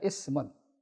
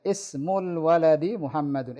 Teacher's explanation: Ismu dibaca alifnya. Hamzah wasalnya dibaca. Terlihat dan terbaca.